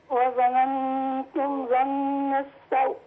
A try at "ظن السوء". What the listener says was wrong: لا بس ما قطمهاش قوي كده يعني ظن السوء السوء لا السوء لا السوء عندما يصبح اللين عرض للسكون يتقوى بعض الشيء، فنخلي بالنا من الحتة دي. إنما القطم كده لأ.